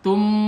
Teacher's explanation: Tum ini ikhfa safawi, setelah mim mati ada huruf ba dibaca dengung